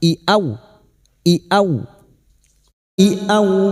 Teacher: Huruf hamzah memiliki sifat jahar dan syiddah, tertahannya nafas dan tertahannya suara.